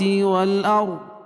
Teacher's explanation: والارض را پر پڑھی جائے گی، کیوں کہ رائے ساکنہ سے پہلے زبر ہے تو را پر پڑھی جائے گی، قاعدہ ہے کہ رائے ساکنہ